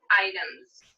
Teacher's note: the word item ends with the sound which is voiced so i'm going to say items with a z ending for the s